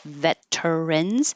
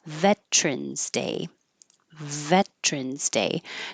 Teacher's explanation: the V is exactly like the F but with voicing so if you have trouble finding the position for V make